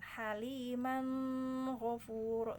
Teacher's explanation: kalau di Abu Ja'far di situ suruh diikhfakan, maka didengungkan